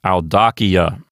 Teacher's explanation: the accent will go back one notch to the left and end up on the DA syllable, known as the anti-penult